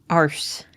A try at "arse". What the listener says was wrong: Arse. You don't pronounce the R. Arse.